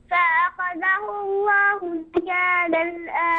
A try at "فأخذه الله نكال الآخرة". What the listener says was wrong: افتح النون كويس جيدا مشان نسمعها.